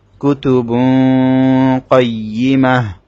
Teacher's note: তাটা ওয়াকফের কারণে হা হয়ে যাবে।